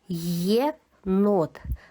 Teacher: На початку слова звук є теж ми чуємо як два звуки.